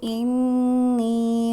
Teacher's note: انی پہ نون مشدد ہے اور یائے مدہ بھی ہے تو لمبا کریں گے، غنہ بھی کریں گے